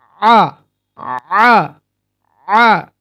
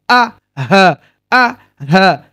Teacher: আইন উচ্চারণ হয় কণ্ঠনালীর মধ্যভাগ থেকে, মানে মধ্যস্থল থেকে। তাহলে আ যদি বলি আমি আ, তাহলে একদম কণ্ঠনালীর শেষের অংশ।